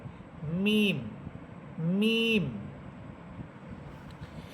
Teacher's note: মিম হরফ এটা দুই ঠোঁটের শুকনো অংশ থেকে উচ্চারিত হবে